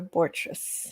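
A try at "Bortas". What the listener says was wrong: There's no R in the second half.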